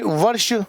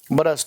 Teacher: और मूर्धन्य श किस में बदल गया? दंतशा में।